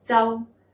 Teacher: the high tone, high falling